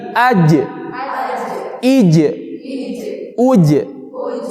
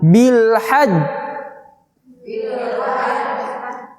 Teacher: dari lisan tengah lurus ke atas langsung ke langit-langit nomor 3, langit-langit keras, lurus ke sana. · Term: huruf jim